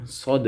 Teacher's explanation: huruf shad adalah idbaq menutupnya lidah ke langit mulut